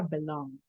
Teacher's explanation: Es como un golpecito el que voy a hacer yo con la D nada más